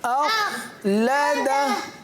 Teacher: आखिर में हा को साकिन करना है। सही है, क्योंकि हा के ऊपर उल्टा पेश की अलामत है।